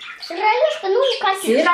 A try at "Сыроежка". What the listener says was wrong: Не са, сыра. Сырая же, сыроежка, поэтому, да.